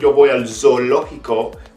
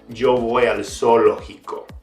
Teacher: And the last one, of course, is the Z, la zeta. It's not pronounced the way we pronounce a Z, like a buzzing sound in English. It's pronounced basically like an S, in Latin America anyway. In Spain, it's pronounced sort of like a TH, but we won't worry about that for now.